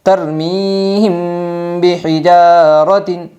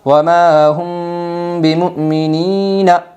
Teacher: اخفاء شفوی ہوگا، میم ساکن کے بعد با آئی ہے، اس لیے میم ساکن کو غنہ اور اخفاء کے ساتھ پڑھے گے